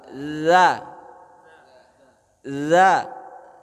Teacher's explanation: Keluarnya dari punggung ujung lidah bertemu dua gigi seri yang atas. Punggung ujung lidah. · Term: huruf dza, huruf za